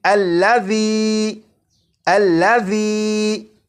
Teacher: ذال کو سی ٹی کی آواز کے بغیر پڑھنا ہے، اور اسے پڑھیں گے الذی الذی۔